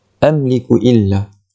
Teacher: kita kena jelaskan bunyi mim tu, tidak perlu dengung, tidak perlu panjang, hanya jelaskan sahaja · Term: izhar syafawi